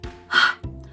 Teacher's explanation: You've got to make sure it's just with your breath and unvoiced. So you take your hand, so that's quite a nice one to remember as well, your hand, and you just push forward with your breath.